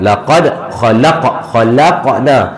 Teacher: Qalqalah sughra ni qalqalah dentakan yang sedikit yang kita jumpa di tengah kalimah.